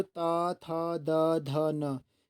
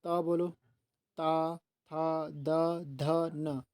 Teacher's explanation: चाहे आप ता बोलो, ता था द ध न, सब क्या हो रही है, दांतों को, ये जो जीभ है दांतों को टच हो रही है